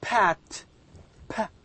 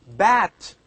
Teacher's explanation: that the sound will be produced by the help of these two lips, the upper and the lower. Now, these are sounds formed using both upper and lower lips. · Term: bilabials